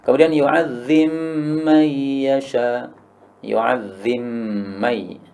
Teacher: Ba-nya idgham pada mim, maka ba-nya lebur jadi mim ya.